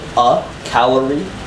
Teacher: calorie has what's known as a schwa so it's like an open vowel